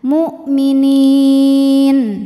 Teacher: nun ini boleh panjang 2, 4 atau 6 harokat asal konsisten dalam sekali bacaan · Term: mad arid li sukun